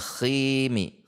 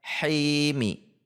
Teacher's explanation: Khimi menjadi huruf kho, tetapi di tengah tenggorokan himi. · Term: huruf ha